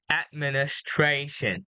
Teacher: So you missed the S sound at the middle of the word.